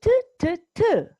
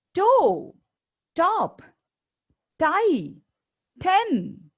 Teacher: while uttering each of these words in order to make the T sound the tip of your tongue touched the beginning of the roof of your mouth